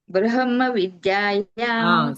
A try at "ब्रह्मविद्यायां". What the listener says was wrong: So you are pronouncing her and then ma, like how it is written. But you have to pronounce ma first and her next.